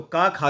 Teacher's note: कंठ के द्वारा बोला जाता है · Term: कंठ ध्वनि